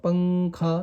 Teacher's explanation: تنوین یا نون ساکن کے بعد حروف اخفا آوے تو نون کی آواز کو ناک میں چھپا کر پڑھنا چاہیے، نوک زبان تالو سے ہٹا کر، جیسے اردو میں پنکھا کے نون کو پڑھتے ہیں، جیسے ہم لوگ ہوتا ہے نا پنکھا، ناک میں آواز جاتی ہے ایسی۔